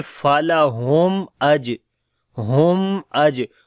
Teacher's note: اظہار شفوی ہوگا، میم کی آواز کلیئر کر کے پڑھیں گے. فَلَهُمْ اج، ہم اج، اور اس کے بعد توسط بھی ہوتا ہے، یعنی کہ نہ تو آواز بند ہو جاتی ہے اور نہ ہی بہت زیادہ جاری ہوتی ہے، تو درمیانی پوزیشن رہتی ہے شدت اور رخاوہ کی.